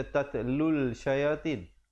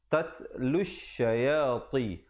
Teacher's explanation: Di situ alif lam syamsiah, lamnya tidak dibunyikan. Jangan pula kita baca tatlul syayatin.